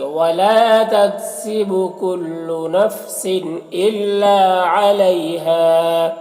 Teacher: یہاں پر تنوین کے بعد حمزہ ہے، حروف یومن میں سے، تو تنوین میں اظہار حقیقی ہوگا، اسے جلد پڑھنا ہے · ولا میں الف مدہ ہے، ایک الف کے برابر کھینچیں گے